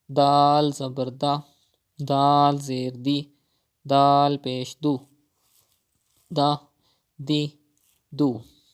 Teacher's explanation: You have to read dal without whistle sound.